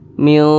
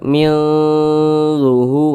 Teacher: Mil tidak condong berbunyi eng, tidak condong berbunyi n. Nah, di tengah-tengah. Mil didengungkan, dipanjangkan sejenak. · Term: ikhfa hakiki awsat